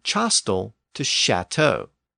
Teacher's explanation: Paris changed that Latin word castellum to chastel with a CH sound and then later that initial sound shifted to an sh sound